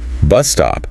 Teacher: bus stop another compound noun with stress on the first word